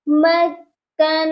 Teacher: یہاں پر نون مشدد ہے، اس کو ہم نے سختی سے بھی پڑھنا ہے اور پھر غنہ بھی کرنا ہے، کیونکہ نون مشدد پر غنہ ہوتا ہے.